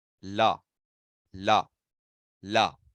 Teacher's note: What do you touch? Your teeth. Therefore, that is also what? Dantya.